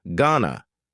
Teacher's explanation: Going to is generally pronounced with a schwa.